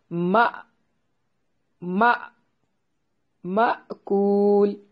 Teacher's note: यहाँ हमजा को झटके से अदा करना है।